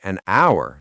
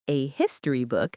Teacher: Hour starts with a vowel sound because the H is silent, but a history book because the H is pronounced.